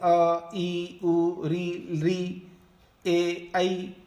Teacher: इन सब स्वरों का जो उच्चारण होता है वो संवृत कंठ से होता है, यानी कंठ को संकोच करके बोला जाता है।